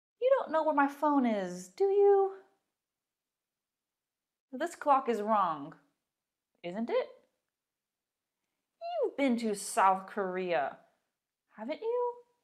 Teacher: in these examples you can hear the intonation rises it goes up at the end because i'm not sure i'm asking a question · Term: rising intonation